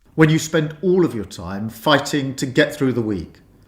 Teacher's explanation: second line he's trying to highlight the word all and therefore he doesn't raise his tone when he says the word spend and the word time so that he can raise his tone on all to get the impact of this word across in his speech